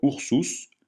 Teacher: u se prononce ou comme dans ours jamais u comme dans perruche